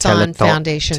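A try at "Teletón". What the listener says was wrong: Telethon. But it's spelled the Spanish way, which is Telethon, which is Teletonne. Telethon.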